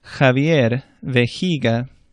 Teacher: J sounds like an English H almost. It's not quite as far back in the throat.